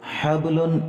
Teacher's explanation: یہاں پہ ہم نے با کے اوپر قلقلہ کیا